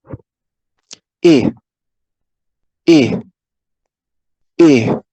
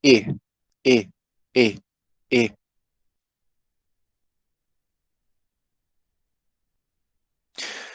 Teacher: it is a high vowel, but it is not as high as E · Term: lax vowel